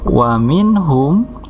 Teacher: nun mati ketemu h, dibacanya jelas, namanya idhar